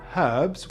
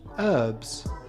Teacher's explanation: British cooks like the H in herbs, whereas Americans prefer herbs.